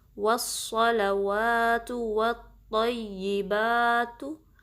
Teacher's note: सौद जो है ना हैवी लेटर्स में से है, पुर हरूफ में से है, तो इसमें आपका क्या होगा कि जो ज़ुबान की बैक पोर्शन है उसको आपने रेस करना है, उठाना है, ठीक है, ताकि ये हैवी अंदाज में अदा हो। वस्सलवातु, सौद पे भी तशदीद है, थोड़ा टाइम देंगे